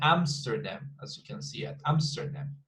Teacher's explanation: In the fourth stress pattern, we have Amsterdam. 3 syllables, we've got the stress in the first one.